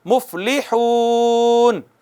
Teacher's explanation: واو ساکن ہو، اس کا ما قبل مدموم یعنی پیش والا ہو تو وہ واو مدہ ہوتی ہے اور اس کو 1 الف کے برابر کھینچتے ہیں